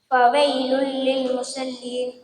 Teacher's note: இதுகாம் பிலா குன்னா என்றால் உன்னா இன்றி ஓதுவதாகும்